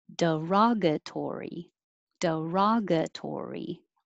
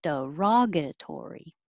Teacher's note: raw is the stressed syllable so open a lot raw and make it longer duration